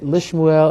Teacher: So we have that happening here, and so we get lishmuel. And this first schwa becomes the hirik, the second schwa goes silent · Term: schwa fight